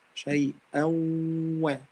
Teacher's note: I don't read the tanween, or I don't read the noon. However, I take the غنة from the noon or the tanween. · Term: إدغام ناقص